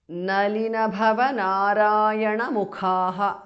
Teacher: Bhava bhas mahapranah, mukhaha khas mahapranah.